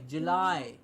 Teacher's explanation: It's not July, it's July. It's not an E sound at the end, it's I